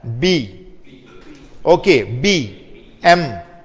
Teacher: When I say bilabial, I am joining both my lips. Okay, I am joining both my lips and creating a voicing noise.